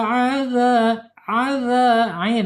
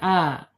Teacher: Ada di tengah-tengah tenggorokan ya, keluarnya. Ya, jangan sampai adza pakai bawah tenggorokan.